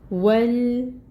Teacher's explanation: واو کے اوپر فتحہ کی حرکت ہے، 1 کاؤنٹ پڑھیں گے۔ لپس کو بالکل راؤنڈ کر لینا ہے اپنے واو کو ادا کرتے ہوئے۔ واو کو لام کے ساتھ ملائیں گے۔